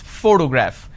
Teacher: i am stressing on this particular syllable which is the first syllable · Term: word stress